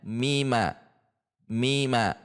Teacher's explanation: Maka jika akan mewasalkan antara ayat ketiga dan keempat huruf mim yang bertemu dengan mim yang kedua-duanya berharakat maka dibaca izhar. Sehingga dibacanya mima.